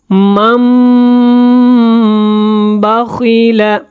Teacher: نون کو میم میں بدلیں گے اور یہاں پہ اقلاب کریں گے اور غنہ بھی کریں گے